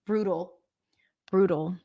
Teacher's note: In American English, this is a flap T and a dark L.